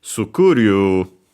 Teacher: In Japanese, it actually is accented on the C, sukuru, so low, high, and everything else low